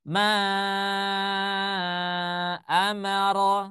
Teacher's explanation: Mad munfasil itu yang apabila dia dibaca 4 sampai dengan 5 harakat dengan posisi dia terpisah masih ingat ya berarti dia terpisah Maksudnya apa dia berada dalam